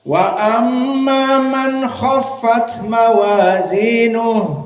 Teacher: Maka qiraah Yaakub dan Ibnu Katsir dibaca seperti hafz an asim dibaca dalam keadaan izhar man khoffat